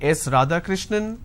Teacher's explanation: the answer is s radhakrishnan some people say s Radha Krishnan now it goes on a rising tone now it doesn't come as an answer it comes as a guess or it comes as a question